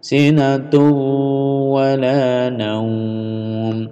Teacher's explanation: Ini ada idgham bi gunnah, masuk, dengung ditahan.